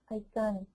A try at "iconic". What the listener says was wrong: Excellent job. Very good.